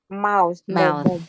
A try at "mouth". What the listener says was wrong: Mouth. Mouth. Mouth. Mouth. Kéo dài ra. Mouth. Mouth. Mouth. Kéo dài vậy đó. Mouth. Mouth.